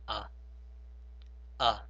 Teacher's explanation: the hamza sound is pronounced normally and you do not uh take the sound from the throat